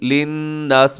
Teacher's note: للناس میں نون مشدد پہ غنہ ہے